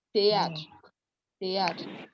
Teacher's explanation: So whenever you have TH in French, it's pronounced as T.